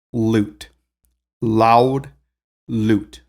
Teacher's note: you can hear in loot it's just one single vowel